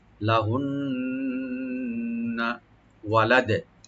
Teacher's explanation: নুন মুসাদ্দাদ এখানে ওয়াজিব গুন্না, একালে পরিমাণ গুন্না করতে হবে, টান হবে না